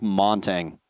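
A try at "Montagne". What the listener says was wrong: Montaigne. The G is silent.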